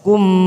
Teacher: mim sukun tidak ada warnanya idhar safawi kita baca jelas